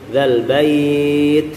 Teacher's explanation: tetap menunaikan sifat dalam ta-nya, ditunaikan keluar anginnya.